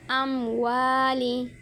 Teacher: اظہار شفوی ہوگا غنہ کے بغیر